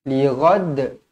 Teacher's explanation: Jadi bila kita waqafkan dia pada hujung ayat, dia jadi qalqalah kubra. Dibaca melantun.